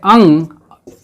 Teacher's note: अनुस्वार जो नाक के सहारे बोला जाता है वर्ण, उसे अनुस्वार कहते हैं।